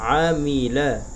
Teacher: আইন জবর আ, মিম জের মি, আমি, লাম জবর লা, আমিলা। আইনটা অবশ্যই গলার ভিতর থেকে উচ্চারণ করতে হবে